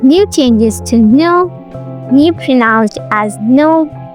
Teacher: In American English, this Y sound is often dropped after some consonants like N, T, G, S, Z, O, and S sound, as in sing. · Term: Yod-Dropping